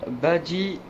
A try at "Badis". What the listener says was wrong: Non, Badis. Il y a un S à la fin, en fait.